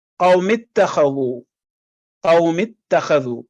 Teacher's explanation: الف جو ہے وہ سائلنٹ ہو گیا، اس کی آواز لفظ میں شامل نہیں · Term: حمزۃ الوصل